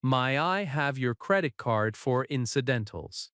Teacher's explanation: In natural speech, may I have often becomes my I have.